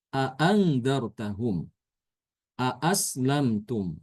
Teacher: Apa itu tahkik? Ya, tahkik itu adalah membaca huruf hamzah sesuai makhrajnya ya. Jadi mengucapkan huruf hamzah dua kali.